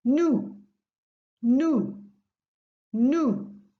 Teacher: And beware not to pronounce the S at the end of it.